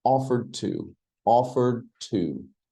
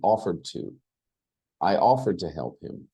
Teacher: You don't really hear the D.